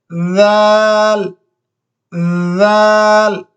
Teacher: تھوڑا سا جس طرح موبائل کا ویبریشن ہوتا ہے اسی طرح تھوڑا سا اس کو ویبریٹ دینا ہے